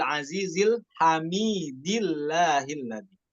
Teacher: Ketika kita wasol ayat 1 dan keduanya bukan hamidillahilladzi. Allahnya bukan dibaca tafkhim, namun tarqiq pada lam lafzul jalalah, hati-hati. Namun ketika kita ibtidanya dari Allah barulah dibaca tafkhim.